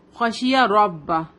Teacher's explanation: ربہ با کو سختی کے ساتھ پڑھیں کیونکہ اس پہ تشدید ہے